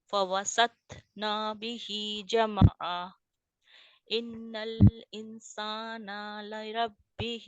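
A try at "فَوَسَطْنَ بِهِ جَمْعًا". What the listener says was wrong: नहीं नहीं नहीं नहीं फवसतना बिही जमआ। आप अपने नून के आगे अलिफ लगा रही हैं बहन। जामा आ नहीं है, क्योंकि आप जब जामा आ कह रहे हैं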